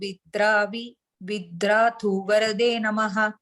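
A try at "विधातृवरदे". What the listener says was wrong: And the first line, sorry, Vidhat, the R sound is coming on the ta. So Vidhatru.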